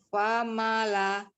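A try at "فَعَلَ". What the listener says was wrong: bukan fama, ain ya, bukan ma, ain. Fa'ala. Fa'ala, dibuka mulutnya ya ketika dia fathah, terbuka semuanya fa'ala. Ainnya tidak di hidung, kemudian tidak dipanjangkan, tidak juga ke dada. Dari tenggorokan bagian tengah ya. Fa'ala. Jangan dipanjangkan, ainnya. Pendek. Fa'ala.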